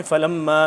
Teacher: یہاں پہ ہوگا غنہ کیونکہ میم مشدد آ گیا اور ساتھ آگے مد بھی ہے. مد ایک 2 الف کے برابر، 2 سے 3 الف کے برابر اس کو ہم لمبا کریں گے، کھینچیں گے.